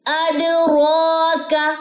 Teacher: کلکلا دال پہ ہوگا, دال جزم پہ